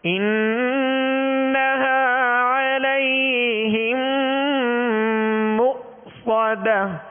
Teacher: مؤصدة حمزہ ساکنہ ہے لہذا جھٹکا واضح کریں گے